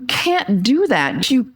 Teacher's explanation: the T is stopped before a word that begins with a consonant or at the end of a sentence